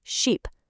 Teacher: But for sheep, that vowel is long and you have to stretch your mouth out, kind of like you're smiling